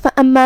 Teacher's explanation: کلمت فَأَمَّا میں یہاں میم پہ تشدید ہے تو ہمیں 2 حرف کے برابر میم کو پڑھنا ہے